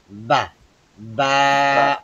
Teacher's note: ঠোঁটের ভেতরের বেজা জায়গা হতে উচ্চারিত হয় বা। দেখেন এই যে ঠোঁটের আকৃতিটা এখানে কিরকম করে দিয়েছি, যে বাহিরের অংশগুলো বাহিরে পড়ে রয়েছে, ভিতর অংশটা যুক্ত করেছে এখানে।